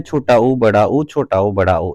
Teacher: तो 4 वृत्तमुखी हैं, छोटा ऊ बड़ा ऊ छोटा ऊ बड़ा ऊ, इनके उच्चारण में ओष्ठों की आकृति वृत्त के समान गोल हो जाती है।